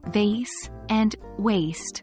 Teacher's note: V involves a vibration of the vocal cords, while W is formed by rounding your lips.